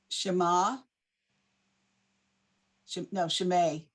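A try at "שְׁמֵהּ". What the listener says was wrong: No. It's a ma, but then you have to finish it.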